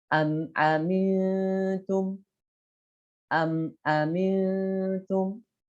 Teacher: mim mati bertemu dengan selain huruf mim dan ba, ya, maka dibacanya tanpa gunnah dan harus jelas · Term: izhar syafawi